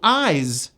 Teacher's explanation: Notice the last sound is a voiced Z.